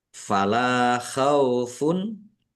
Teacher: Lam fathah alif mad thobi'i panjang dua harakat. Domah tanwin bertemu dengan huruf ain. Bacaan izhar dibaca jelas.